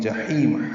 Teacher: ہا وسط الگ سے ادا کرتے ہوئے 2 حرکات لمبا کریں گے